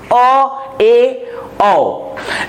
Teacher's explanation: अर्ध विवृत स्वर, जब मुंह के गोले को आधा खोला जाता है तो इसे कहा जाता है अर्ध विवृत स्वर